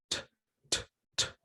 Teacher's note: we say voiceless because there is no vibration. If you touch here, your throat, you're going to feel no vibration when you make the sound t, t, t. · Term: voiceless consonant